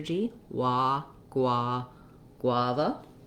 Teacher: you don't want uh any sort of clear vowel on that last syllable it's a reduced schwa sound · So we have first syllable stress, and this GU actually says the G and the W. And then we don't have any kind of vowel sound for the U. We just have the consonant or the glide, the W sound. Then the letter A says the A vowel.